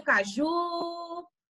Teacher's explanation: que ele falou com mais poder olha o caju então acaju a sílaba tônica foi o ju ele falou com mais intensidade ele falou com mais força